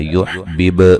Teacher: با کو ہلا کے پڑھنا ہے، با قلقلہ ہے